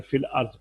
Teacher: دو ساکن دو لفظوں میں جمع ہوں تو ان کا باقی رکھنا جائز نہیں، جیسے فی الارض تھا، حمزہ نہیں پڑھا جائے گا، اور جب ہم نے پھر یا بھی ساکن ہے، لام بھی ساکن ہے، تو یا کو ختم کر دیں گے، یا کو ختم کر دیں گے تو فا کو لام سے ملا کر فی الارض پڑھیں گے